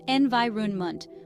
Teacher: The pronunciation is environment, with the stress on the second syllable.